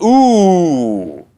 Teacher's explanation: oo, this loud long booming sound, belongs to the same phoneme as u